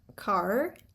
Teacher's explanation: In rhotic accents, you pronounce car, you pronounce the R at the end of the syllable, you pronounce the R at the end of the word.